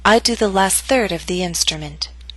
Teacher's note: Note that primary stress is in the middle of the statement. Your voice will continue to fall after the word third.